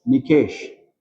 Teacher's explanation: my actual stress goes on K